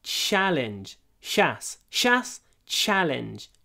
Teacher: ch ch I open my mouth it's a challenge challenge and the CH I would say is really quite soft it's like saying um CH with a sh afterwards